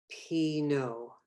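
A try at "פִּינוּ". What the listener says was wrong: Remember the ooh in the middle of the body is like punching you in the stomach. It's ooh, as opposed to the O hitting you in the head is O, right?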